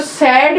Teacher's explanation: Next जो सैड में ए आता है, सैड थोड़ा बड़ा आया हमारा, तो ये जो है हमारा front अनराउंडेड vowel just below half open. देखिए ये पोजीशन है ना, तो just below half open position.